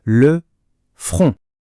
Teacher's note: Attention à la prononciation ici. C'est une voyelle nasale. Le front. Le N et le T à la fin sont muets. On ne les entend pas.